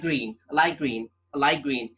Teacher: the T is pronounced as K